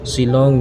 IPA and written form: ʃɪˈlɒŋ (Shillong)